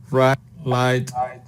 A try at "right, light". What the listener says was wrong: Yeah, I think you can work on that R and that L a little bit more.